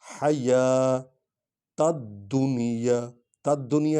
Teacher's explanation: حیات الدنیا، تد دنیا اس لیے پڑھ رہے ہیں کہ دال پر شد ہے، الف لام کو نہیں پڑھنا، بلکہ ہم نے سیدھا دال کو پڑھنا ہے